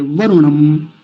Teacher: यक्ष व नो वरुणम, वरुण नहीं कहेंगे, लंबा नहीं खींचेंगे क्योंकि छोटे ऊ की मात्रा बनी हुई है